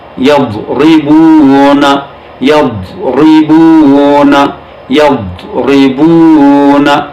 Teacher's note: حرف ضاد جب ساکن حالت میں آئے تو استطالت کی صفت بھی رکھتا ہے